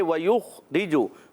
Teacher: خا کی ادائیگی حلق کے اوپر والے حصے سے، حرف ہلکی میں سے، حرف مستعلیہ میں سے بھی، موٹا بھی رکھنا ہے، کلکلا نہیں کرنا۔